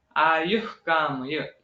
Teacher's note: इसमें ह का उच्चार जो विसर्ग का है वो आधा आता है